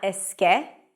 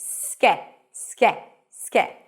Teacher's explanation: Notice that you're not adding any vowel before, not eske.